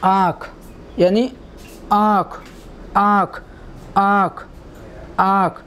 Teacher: इसका उच्चारण नाक और मुंह दोनों से हो रहा है तो यह आपका अनुनासिक कहा जाएगा